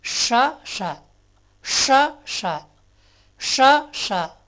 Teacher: அப்போது இந்த 2 ஷாவுக்கும் என்ன டிஃப்ரென்ஸ்னா, ஷா முதல் ஷாவை கொஞ்சம் நேரம், அதாவது 1 செகண்டு அதிகமாக அழுத்தணும் உச்சரிக்கும் போது. அடுத்த எழுத்து ஷா சொல்லும்போது அவ்வளோ அழுத்தம் தேவையில்லை, பாதி அழுத்தம் தான்.